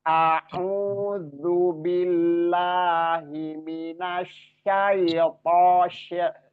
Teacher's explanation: To-nya ingat isti'lanya dinampakkan. Bukan to ringan. Kalau to terlalu ringan, isti'lanya nggak nampak ya.